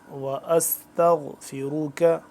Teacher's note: غائن موٹا را موٹا